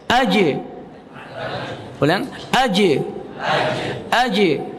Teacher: Qalqalah syiddah nya yaitu AJ berhenti kemudian dipantulkan